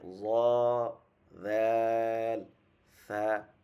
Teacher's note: 13 নম্বর মাখরাজ জিহ্বার আগা সামনের উপরে দুই দাঁতের আগার সাথে লাগিয়ে